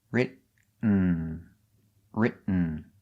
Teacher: you ever written a book very good the pronunciation of written you go to a stop T RIT but you don't make the T you stop RIT and then you fall to an N